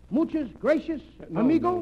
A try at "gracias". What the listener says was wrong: No, not gracious. That word is gracias. You see, in Spanish, the C is pronounced T-H. Gracias. T-H. In Spanish, the T-H...